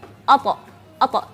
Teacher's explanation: Dan ketika ta sukun kita harus menjelaskan qalqalahnya.